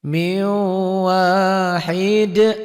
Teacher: nun mati ketemu waw jadi dibacanya miu. Rumus, setiap huruf mati bertemu huruf bertasydid, huruf matinya tidak dibaca. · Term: idgham bi gunnah